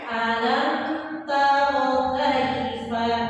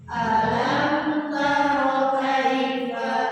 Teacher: Cukup dibaca dengan jelas mimnya dan jangan ditahan atau jangan digunakan